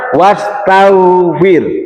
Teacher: wo itu kan huruf tebal, tapi dibacanya huruf tipis.